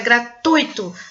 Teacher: A sílaba tônica é no ui